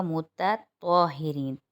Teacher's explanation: مخرج دونوں کا ایک ہے، لیکن تا باریک اور طوا موٹا ہے، کیونکہ طوا حروف مستعلی میں آتا ہے، اس لیے ان کی ادائیگی پہ ذرا دھیان رکھیے گا۔